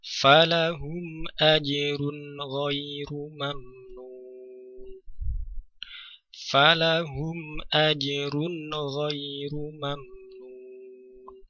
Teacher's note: tanwin pada huruf ro, kemudian setelahnya ada ghain, maka dibaca dengan jelas bunyi tanwin atau suara nun sukunnya